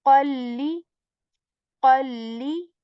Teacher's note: So we discussed that whenever after noon sakin or tanween comes letter lam, what do we do is that we enter the sound of this qan into li, right? We join these sounds, we assimilate these sounds